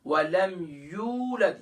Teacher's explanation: یا کے بعد واو مدہ ہے، ایک الف کی مقدار کھینچیں گے